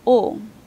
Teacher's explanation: the back of the tongue goes a bit high and makes the narrowness is happening towards the back of the mouth the back of the vowel space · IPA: /o/